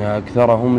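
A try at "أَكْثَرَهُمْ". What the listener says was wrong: لا الراء فتحه اكثرهم طيب جزاكم الله خير شباب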